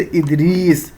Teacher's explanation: یا معروف وہ یا جس کو کھینچ کے پڑھا جائے